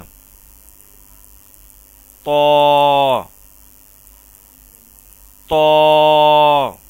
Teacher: طا کو بھی تا کی طرح زبان کی نوک اوپر والے دانتوں کی جڑ میں لگا کر خوب موٹا اور پر کر کے ادا کیا جائے گا